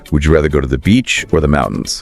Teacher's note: up and down on both Beach and mountains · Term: rising falling